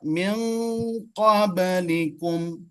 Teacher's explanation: Nun Qabl. ujung lidah bertemu dengan qaf yang berada di pangkal lidah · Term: ikhfa